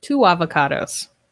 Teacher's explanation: with two avocados we link the sounds with wha two avocados so it's almost like we have a w sound in there